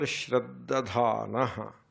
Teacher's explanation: But if it is Shraddadhana, the first one is not Mahaprana, the second one is Mahaprana.